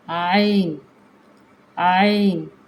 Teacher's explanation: یہ ہمارے واسطے حلق سے مطلب حلق کے درمیان والے جو گردن ہے ہماری اس کے درمیان والے حصے سے ادا کیا جاتا ہے